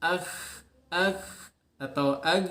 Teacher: syiddah, suaranya tidak mengalir, tidak ada suara yang mengalir ketika diucapkan, terutama ketika sukun ya.